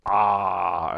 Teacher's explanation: as low as it get would be ah as in part